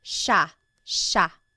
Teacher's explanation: for the most part in the central Luzon Tagalog speaking areas it's pronounced sha sha